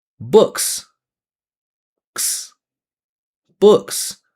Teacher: we're just going to make it plural by adding the voiceless S